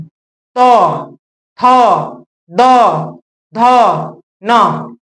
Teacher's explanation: ये देखिएगा कि दांत से निकलता है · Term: त वर्ग